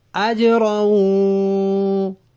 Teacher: اجروں میں بھی جیم پہ آواز کو حرکت دیتے ہیں، اس کو قلقلہ کہتے ہیں